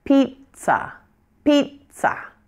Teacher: first syllables louder and longer the second syllable is shorter and quieter · this word is actually fairly easy to pronounce it's two syllables the first syllable is going to be loudest and longest it's your primary stress syllable